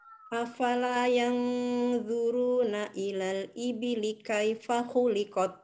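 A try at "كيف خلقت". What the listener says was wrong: Iya, huruf ta-nya coba dialirkan apa udaranya sekarang. Huruf ta-nya dialirkan. Khuliqat. Khuliqat.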